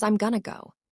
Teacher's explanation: That crisp am shrinks into m. The oi in going becomes uh in going to. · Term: disappearing sounds